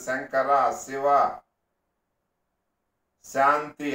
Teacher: సంస్కృతంలో కూడా అలాంటి షా అనే మాట లేదు. తాళవ్య సకారమే ఉంది.